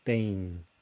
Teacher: EM at the end, don't say tem, it's tem. Quite a nasalized sound.